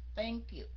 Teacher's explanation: La lưỡi ra đọc giống như chữ T vậy đó, nhưng mà phải la lưỡi ra.